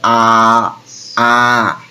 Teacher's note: ভালো করে লক্ষ্য কর, আ আ। জিভ একদম ভাই নিচে থাকছে, আ আ। ও নড়ছেও না, চড়ছেও না, এই জন্য একে নিম্ন স্বরধ্বনি বলবো, আ আ। এরপরে ওর থেকে একটু উপরে থাকবে, সেটা হচ্ছে নিম্ন মধ্য, একটু উপরে থাকবে।